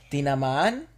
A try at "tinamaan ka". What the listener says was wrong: Tinaman and ka. No, because remember the double vowels are separate. They sound like... Yeah, tinama and ka. So the anka would sound like one word.